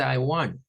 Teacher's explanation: no suena la T, ¿verdad? Que es una cuestión muy común, digamos, en el hablar norteamericano.